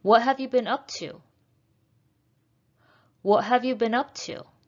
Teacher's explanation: what have you been up to is a falling intonation